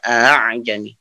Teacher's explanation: A yang keduanya itu jadi dilembutkan gitu cara bacanya. Tidak ditahqiq. Setengah tahqiq lah gitu istilahnya ya. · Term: ditashil